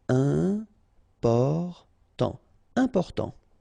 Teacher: Important, so final T not pronounced, and then remember you've got this EM, and after that it's a consonant, so it is here nasal